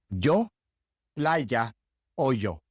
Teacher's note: There are other places in which the Y is pronounced pretty much the same as it's pronounced in English, but in most places, the Y has that very light J sound